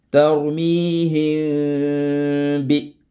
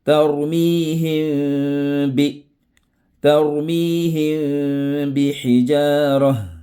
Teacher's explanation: Cette règle, on parle ici de ikhfa al-shafawi, nécessite le nazima, al-ghunna. Le son qui sort du narine.